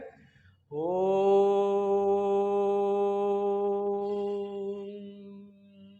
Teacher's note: जब भी आप ओम को बोलते हैं तो कैसे बोलते हैं? ओम, यानी ह्रस्व से तिगुना समय लगा इसमें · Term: प्लुत